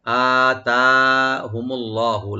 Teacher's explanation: লফজে জালাল এখানে ডিপ করে পড়বো আমরা।